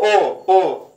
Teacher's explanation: ओ कहां से बोले जाएंगे? कंठोष्ठ से।